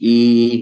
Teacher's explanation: Ternyata ketika kasrah itu tengah lidahnya naik. Ini tengah lidahnya naik I gitu.